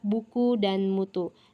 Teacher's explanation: Selanjutnya huruf U yang bercirikan tinggi, belakang, dan bulat